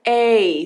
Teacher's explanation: uma vogal longa Ela é bem alongada ela vai ser sempre semelhante ao nome da letra